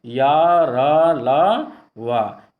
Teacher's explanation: इन व्यंजनों का उच्चारण स्वर तथा व्यंजन के मध्य का सा होता है। उच्चारण के समय जिह्वा मुख के किसी भाग को स्पर्श नहीं करती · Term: अंतस्थ व्यंजन